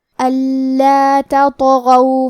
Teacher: غین کی ادائیگی حلق کے اوپر والی حصے سے ہے، غین بھی حروف التفخیم میں سے ہے تو ہمیں غین کو موٹی آواز میں پڑھنا ہے.